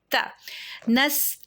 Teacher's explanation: سین کی سیٹی پرومیننٹ سنائی دینی چاہیے، ساکن سین ہے، نس، تا کے اوپر زبر ہے، اس کو تو نہیں کرنا ہے، تا ویک لیٹر ہے